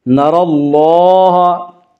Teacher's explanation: اللہ کے لام سے پہلے زبر اور پیش ہے تو اللہ کا لام پر پڑھا جائے گا